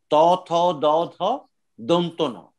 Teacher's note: ত, থ, দ, ধ, ন, এর উচ্চারণ স্থান হচ্ছে দাঁত